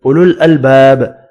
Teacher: اولو الالباب، الف مدہ یہاں بھی ایک الف کی مقدار میں کھینچ کر پڑھنا ہے. با ساکن پڑھا جائے گا وف کی صورت میں، اور با ساکن پر قلقلہ کریں گے